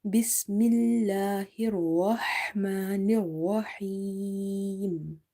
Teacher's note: Ha from the middle of the throat of the word Rahma.